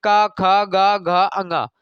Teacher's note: लेकिन आपको यह समझना है कि का वर्ग का जब भी आप बोलेंगे का ख गा घ अंगा, तो कंठ, कंठ का प्रयोग होगा, यानी कि सबसे भीतरी वाला जो स्वर यंत्र है उसका प्रयोग होगा।